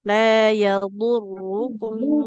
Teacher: Dot dengan ro-nya sama-sama tebal.